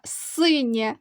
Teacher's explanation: два склади наголошений перший склад остання буква є вона позначає звук е тому що стоїть після